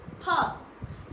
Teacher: बोलते समय आपके दोनों ओंठ आपस में टकराते हैं